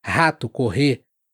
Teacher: o R inicial e o RR são fortes como o H em house, house, mas um pouco mais gultural, um pouco mais na garganta.